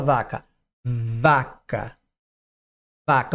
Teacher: Agora a vaca vaca já vibra no V